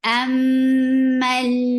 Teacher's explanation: Mim will get sifa of akmal gunna. Amal. Mim, for fatha, open your jaws very nicely.